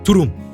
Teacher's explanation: the front tongue coming together with the Upper Front Teeth while air is being forced out of the mouth